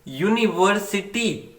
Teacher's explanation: जहां पर ये साउंड यानी जो यू से स्टार्ट हो रहा है, यू हमारा वोवल है, बट आवाज आ रही है वाई की, वाई कॉन्सोनेंट की